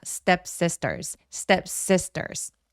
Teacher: step sisters 할 때 s 뒤에 t들이 두 번 나오잖아요. 요럴 때 둘 다 된 소리 내 주셔도 됩니다.